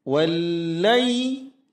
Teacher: tasydid huruf lam tidak ditahan lama, melainkan hentakan saja. Wallai, kemudian lay itu disebut dengan mad lin.